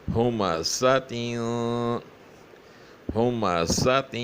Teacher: سخت اور پتلی ادا ہونی چاہیے، اس طرح کہ اس میں سیٹی سی آواز نکلے.